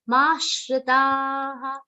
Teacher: The aghat on ma will be very subtle because it is a long sound. Complete the long sound and then give the aghat of sh.